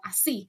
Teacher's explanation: la Y, que suena como sh, como así